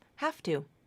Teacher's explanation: I really feel no voicing at all it's pronounced more like um an F